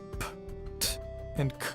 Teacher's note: In contrast, p, t, and k are unvoiced. The vocal cords don't vibrate.